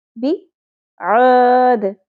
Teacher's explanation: دال ساکن پہ قلقلہ ہوگا